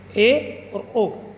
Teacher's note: अर्ध संवृत यानी कि मुख विवर सकरा होता है, जिसमें जीभ दो तिहाई उठी हुई होती है, ए और ओ। इसी प्रकार से संवृत होता है, उसमें मुख विवर अत्यंत ही सकरा हो जाता है और जीभ बहुत ऊपर उठ जाती है।